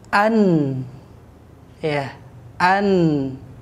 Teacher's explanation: huruf nun itu berhenti pada ujung lidah menempel pada gusi dua gigi seri atas